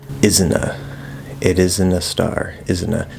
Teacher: So, there are two pronunciations, this person is saying, or asking. One, you can drop the T and link the N and the uh, the schwa sound.